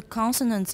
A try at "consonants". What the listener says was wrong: Consonants? Not con, ah. Consonants. Con. You're saying con, 健康的 con. 我们不要舌后音,我们要舌尖音。Con. Con, 点的 n. Con. N 点的 n, say N 点.